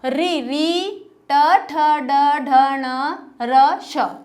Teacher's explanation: ये सब किससे संबंधित होते हैं? मूर्धा से, ठीक है।